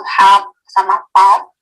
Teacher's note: cluster akhir dimulai dengan lateral atau R